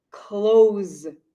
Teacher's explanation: So you see an S, but the sound in English is similar to a Z. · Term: Z sound